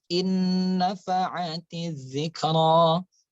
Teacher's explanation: Nah, itu dibaca dengan dengung ya, idgham bi gunnah, dimasukkan dengan dengung